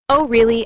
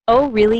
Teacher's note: Notice how your voice rises slightly at the end. That rising tone shows interest.